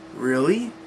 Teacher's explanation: the slight rising of tone to indicate a question